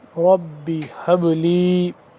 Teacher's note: یہاں پہ با ساکن ہے تو یہاں پہ ہم اس پہ قلقلہ کریں گے